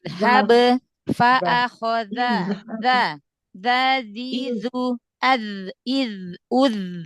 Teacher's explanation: Gesek sedikit makhrajnya ya biar enggak kayak huruf dal.